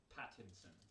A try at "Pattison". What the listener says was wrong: There's no N. It's Pattison.